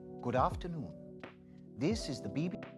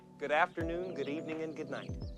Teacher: General British GB pronounces it as afternoon without the R sound, while General American pronounces it as afternoon where the R sound is clearly heard. This shows that General British GB is non-rhotic, which means we cannot hear the sound, the R sound, while the General American GA is rhotic, which means we can hear the R sound clearly. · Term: rhoticity